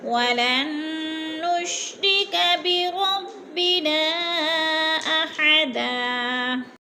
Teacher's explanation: ولن پہ نون مشدد ہے، غنہ کریں گے، ناک میں آواز لے جائیں گے